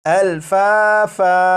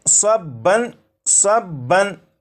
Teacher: جب یہاں پر وقف کریں گے تو دو زبر کو الف سے بدل دیں گے، اور یہ جو لفظ ہے الفافن، یہ الفافن نہیں پڑھا جائے گا بلکہ وقف میں یہ پڑھا جائے گا الفافا۔